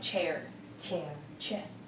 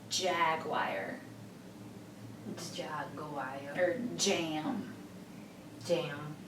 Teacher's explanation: cha is voiceless but ja is voice